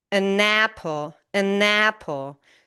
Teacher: The N is linked to the A in apple. So this essentially becomes one word. So the last sound of the first word becomes the first sound of the second word.